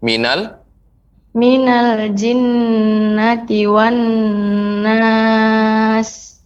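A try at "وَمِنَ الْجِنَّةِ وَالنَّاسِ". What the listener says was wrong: Nah, kemudian tambahan juga ketika mengucapkan huruf wa maka lebih dengan mulut kita dimonyongkan. Wa minal jinnati wan. Ya, memang pengucapan wa ketika tidak kita monyongkan mungkin sudah terbentuk, sudah mungkin terdengar wa. Tapi ketika kita monyongkan bibir itu, maka suaranya akan lebih jelas pengucapan wawnya. Wa, seperti itu.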